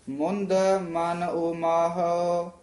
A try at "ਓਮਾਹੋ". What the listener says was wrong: ਓ ਮਾਹੋ ਇਸ ਤਰ੍ਹਾਂ ਬੋਲਣਾ। ਊੜਾ ਖੁੱਲੇ ਮੂੰਹ ਲਿਆ ਨਾ, ਓ ਮਾਹੋ। ਹਾਓ ਨਹੀਂ ਕਹਿਣਾ, ਹੋ ਐ ਬੋਲਣਾ। ਊੜਾ ਊੜੇ ਦੀ ਆਵਾਜ਼ ਖੁੱਲੇ ਦੀ।